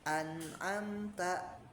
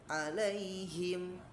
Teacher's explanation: Nah, kita menyukunkan begitu ya, berhenti gitu. Nah, maka ini ya dibaca gunah melibatkan rongga hidung, namun gunahnya tanpa dipanjangkan ya. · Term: asakin, as-sakin